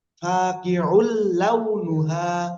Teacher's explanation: গুন্না ছাড়া মিলিয়ে পড়তে হবে